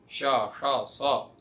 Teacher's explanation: जैसे आप उदाहरण के लिए आप श बोलिए, तो श बोलने में आपको क्या होता है, श बोलने में आपकी वो वायु ज्यादा निकलती है, श्वास का स्वरूप बनता है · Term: श्वासात्मक आवाज